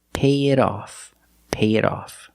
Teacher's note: the T in it is between vowels. So we change it to a fast D and we say pay it off.